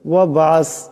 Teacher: বা সাকিন বা কলকলা হরফ, আওয়াজটি কলকলা করে পড়তে হবে